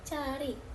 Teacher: Bunyi apikal oleh ujung lidah seperti D pada kata dari dan bunyi palatal yang dihasilkan oleh langit-langit seperti C pada kata cari